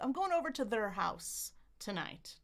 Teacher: We can reduce it to schwa. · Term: reduction